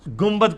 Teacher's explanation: نون ساکن کے بعد جب کبھی بھی با آ جائے تو وہ میم سے بدل جاتا ہے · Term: اقلاب